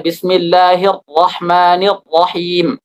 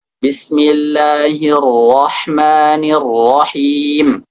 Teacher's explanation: membaca Ra dengan kuat dengan sifat syiddah jadi nanti seakan-akan keluar huruf th misalnya bismillahirrahmanirahim itu enggak boleh